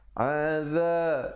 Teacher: za di hujung lidah.